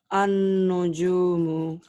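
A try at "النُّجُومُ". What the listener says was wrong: An ditahan ya. Ditahan dengung ke hidung. An-nujumu. Ada nun yang bertasdid.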